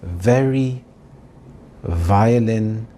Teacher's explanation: The V sound is made as a VV. So, your top teeth touch the bottom lip very slightly as in the words very, violin.